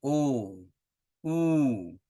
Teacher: ओठ गोल हो जाते हैं, थोड़ा आगे निकल जाते हैं। ओ, ऊ, इसीलिए लीबिया का, होठों का ज़्यादा काम होता है। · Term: लेबियल वॉवेल्स